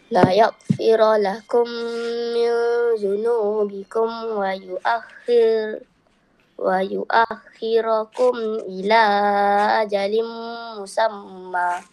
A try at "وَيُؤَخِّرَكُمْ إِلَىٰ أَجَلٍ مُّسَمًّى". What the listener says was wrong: Panjang sikit. Musamma.